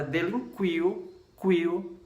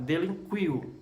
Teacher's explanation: o U tem um som fraco, o I tem um som mais aberto, mais forte, e o U tem um som fraco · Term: semivogal, vogal e semivogal